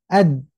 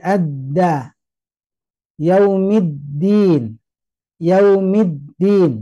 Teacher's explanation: syidah itu ya kuat jadi mau Tidak mau suara itu tertahan